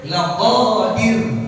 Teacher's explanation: Jangan dipanjangin tuh ya rnya tipis ya